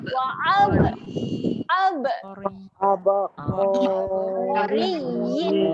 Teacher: pastikan adanya lantunan pada huruf ba.